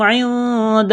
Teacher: نون ساکن کے بعد یہاں پر دال ہے، حروف اخفا ہے، غنہ کریں گے، آواز ناک میں چھپائیں گے